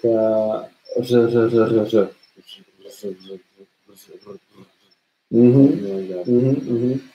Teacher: the stream of air doesn't really close, doesn't really stop when we pronounce r, and the tip of the tongue vibrates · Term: vibrant sound